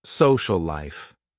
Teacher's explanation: We say social life, because we just connect them. And we make one word out of two words when we talk.